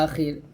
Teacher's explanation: আমি এখান থেকে মিলাই নিয়ে আসি, মান ইয়াকুলু আমান্না বিল্লাহি ওয়া বিল ইয়াউমিল আখির, এই যেখানে থামছি আখির, থামার মানে হচ্ছে যে হরফকে থামবো ও হরফটাকে সাকিন করে ফেলবো, এখানে রটাকে আমি সাকিন করে ফেলছি